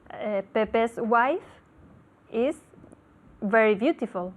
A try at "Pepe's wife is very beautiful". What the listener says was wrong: Hay que hacer esa diferencia entre very y después beautiful.